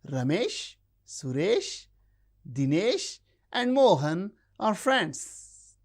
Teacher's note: We use rising tone when we count things 1, 2, 3, 4, 5. The last one takes the falling tone.